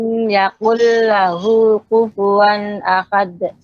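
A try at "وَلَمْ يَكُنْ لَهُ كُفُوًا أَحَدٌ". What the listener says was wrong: Maaf Bu, itu kaf atau kof? Kalau kaf jangan dikatakan ko. ini kesalahannya lah nul jali. Kesalahan yang fatal, bisa merubah arti. Ya tidak ku, tapi ka. Tempatnya ya punggung lidah atau lidah bagian belakang bertemu dengan langit keras. Awal langit keras, Bu. Kan lidah kita bagian belakang itu kan ada langit lunaknya itu.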